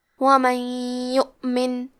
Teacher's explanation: پھر حرف الیا ہے کلمت یؤمن. یہاں حکم ہے ادغام بغنہ تو ہم یہ حکم کو غنہ اور تشدید کے ساتھ پڑھیں گے. ومن یؤمن. کلمت یؤمن کے آخری میں نون ساکن ہے.